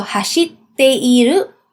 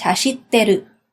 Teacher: So basically, you just remove the i syllable.